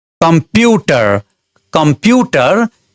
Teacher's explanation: कम्प्युटर कम्प्युटर 3 वटा सिलेबलले बनेको word हो। यसलाई उच्चारण गर्दाखेरि दोस्रो सिलेबल प्युमा स्ट्रेस पर्छ।